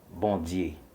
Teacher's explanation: From French, bon, which is good, and die would be the word Dieu in French with the Haitian pronunciation, the palatalization of the French d sound